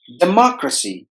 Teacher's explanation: we have to stress the second syllable. Mock must be heard with more volume than the other syllables.